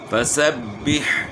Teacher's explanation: حا کی آواز گلے کے درمیان سے نکلے گی